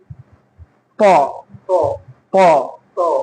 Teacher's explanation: Po ni sebab dia ada pangkal lidah terangkat.